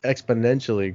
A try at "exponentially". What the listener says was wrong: you forgot the D. On that first one, you said exponentially.